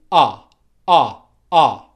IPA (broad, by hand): ʌ